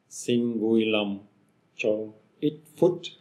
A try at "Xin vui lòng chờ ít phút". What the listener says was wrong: Now, chờ is the O with the hook and the tone is falling.